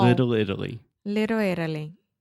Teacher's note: that is what we call a flap T. So I'm not really articulating that T sound. I'm not saying little.